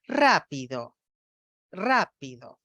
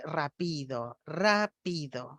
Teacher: verlo esquemáticamente a la derecha lo represente con una flechas Entonces el F cero de la fonoaudióloga va de alto a bajo en ra y después permanece un tono bajo en las otras dos sílabas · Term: acentuación típica